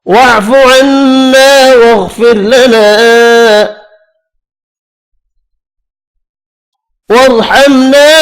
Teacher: را باریک پڑھیں گے فا والی زیر کی وجہ سے